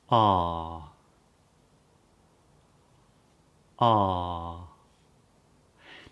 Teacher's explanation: the back of the tongue is really quite low in the back of the mouth. So there's lots and lots of what I call vertical space. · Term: R vowel sound